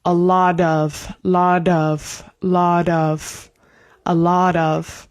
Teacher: the T is said like a flap T